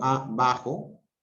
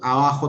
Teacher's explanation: hay un silencio entre, es muy breve, pero es un silencio